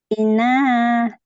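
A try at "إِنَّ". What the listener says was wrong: Ina. Jangan sampai ina. Itu kepanjangan ya. Ina. Gitu ya dia. Ina. Gitu. Ina.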